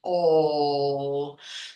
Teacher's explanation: Now, in opposition, this dark L is going to be formed, as I said, with the open throat, oh. So the tongue is really flat, laying on the bottom of the oral cavity